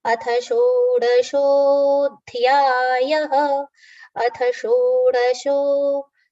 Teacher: Cerebral sh initially, and then the palatal sh.